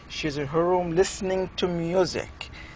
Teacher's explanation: so you want to stress that she is listening to music